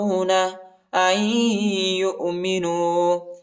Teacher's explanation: حمزہ کو یا کے ساتھ ملائیں گے اور غنہ بھی کریں گے، نون نہیں پڑھا جاتا، ٹھیک ہے، کیونکہ یا پر شد آیا ہے، اور غنہ بھی کریں گے۔